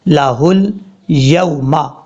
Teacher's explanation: واو لین کا مطلب ہوتا ہے اس کو شارٹ کٹ پڑھیں گے، لمبا نہیں کریں گے